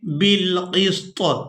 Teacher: क़ाफ को सीन साकिन और तौ साकिन के साथ मिलाकर अदा करेंगे